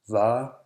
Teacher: The letter V is also pronounced as an approximant, not usually a fricative.